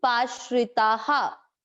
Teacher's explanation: आ की, ता, तो विसर्ग को पढ़ा जाएगा हा। आ की मात्रा है ता में, इसलिए विसर्ग को पढ़ा जाएगा हा।